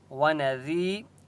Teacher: یا مدہ ہے، ذال کو ایک الف کی مقدار کھینچ کر پڑھیں گے